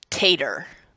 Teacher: Or the final “o” changing to “er,” like “potato” would be “tader.”